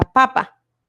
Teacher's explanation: la sílaba acentuada es la penúltima